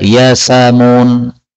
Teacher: Kemudian ayat 38, kata-kata yas'amun kalau dibaca berhenti, maka boleh dibaca yasamun. Yasamun berarti hamzahnya hilang. Bacaan seperti ini disebut bacaan naql.